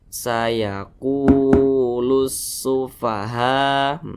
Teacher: tepat berada di belakang huruf wa sukun maka dia dibaca panjang Mad thii panjangnya itu dua harakat atau kira-kira dua ketukan